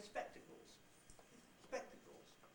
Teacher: the syllable spec is not falling at all. It's just high. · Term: high form nuclear tone